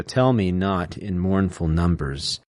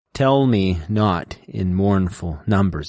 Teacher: You have the trochee, which is stressed, unstressed.